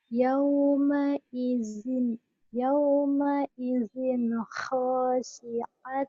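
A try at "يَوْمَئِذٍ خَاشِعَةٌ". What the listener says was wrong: Shin. Khashi'atun. Shin.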